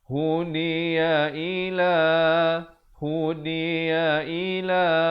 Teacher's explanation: Hu satu harakat, di satu harakat, ya juga satu harakat, i juga satu harakat, la je dua harakat.